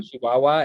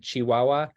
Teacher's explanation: one of the things that you hear from a Chihuahuan accent is like instead of a ch for the ch, it's more of a sh sound.